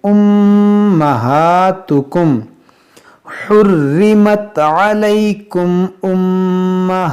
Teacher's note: मीम साकिन के बाद हमज़ा है, तो यहाँ पर इजहार शफवी करेंगे, यानी यहाँ पर गुन्ना नहीं करेंगे।